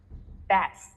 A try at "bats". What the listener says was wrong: It sounds like you're saying bat, and then the S is coming first. It sounds like you're saying best. Okay, so it's important to separate this. Take a pause. Yeah, think of them as two separate sounds.